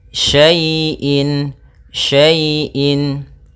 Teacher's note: Pada bacaan wa kulla syai'in, syai' di sini ada fathah bertemu dengan ya sukun. Maka apabila ada huruf ya sukun didahului dengan harakat fathah, ini kita namakan dengan bacaan lin, yang mana ya dalam membacanya lembut